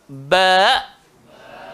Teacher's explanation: Huruf ba keluar di antara dua bibir.